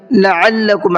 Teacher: عین کو حلق سے نکال کر کے پڑھنا ہے